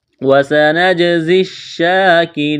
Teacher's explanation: جیم پر قلقلہ کریں گے، زا میں سیٹی کی آواز پیدا کریں گے. وَسَنَجْزِي الشَّاكِرِينَ اس یا کو نہیں پڑھیں گے، کاف کو باریک کرنا ہے، را کو باریک کرنا ہے، یا مدہ ہے، ایک الف کے برابر کھینچنا ہے.